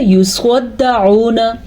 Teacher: سواد تب ہوگا جب ہم اس کو پر یعنی کہ موٹا پڑھیں گے۔ دال کے اوپر شد ہے، اکثر لوگ اس کو پڑھتے ہیں یصدعون، یصدعون، یہ غلط ہے کیونکہ دال پہ شد ہے، تو اس شد کو ضرور آپ نے پڑھنا ہے۔ · سواد کو پر پڑھنا ہے۔ سواد ان 7 حروف کے گروپ میں سے ہے جو ہمیشہ پر یعنی کہ موٹے پڑھے جاتے ہیں